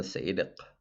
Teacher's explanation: a uvular stop meaning that it's made with your uvula the little flap of skin at the back of your mouth